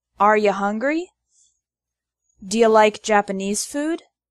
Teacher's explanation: The word you often becomes ya in informal spoken English.